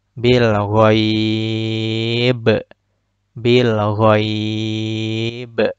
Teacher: Pantulannya besar dan pantulannya terputus karena tidak tertimpa dengan bacaan setelahnya. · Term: qalqalah kubra